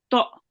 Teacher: we join on the to onto the alif, and then we make a jerking sound